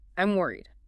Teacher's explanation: Your voice should be a little slower and your pitch should be slightly lower, especially on the word worried. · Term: the energy drops, the drop